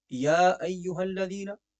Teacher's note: یا کو آپ تھوڑا سا لمبا کریں گے کیونکہ یا کے اوپر ایک تو کھڑی حرکت بھی ہے اور دوسرا مد منفصل بھی ہے